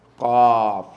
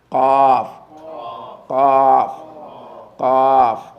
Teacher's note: the back of the tongue rising to touch the soft pallet